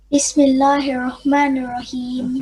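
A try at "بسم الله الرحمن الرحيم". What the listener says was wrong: On the ra there is a shadda. So you're supposed to say it kind of twice. Bismillah, hirra, hirra. You make it of tikrar. Hirra.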